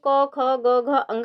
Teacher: ये जो क वर्ग है, इसमें क, ख, ग, घ, ङ आएंगे और ये कंठ से बोले जाते हैं